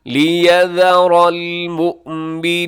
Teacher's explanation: لیذر یہاں ذال ہے اور اسے زا نہ پڑھیے گا، را موٹا رکھیے گا۔